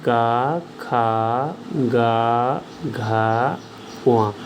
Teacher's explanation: प्रत्येक का कंठ तो है ही, लेकिन अंतिम वाले का कंठ के साथ साथ नासिका भी है।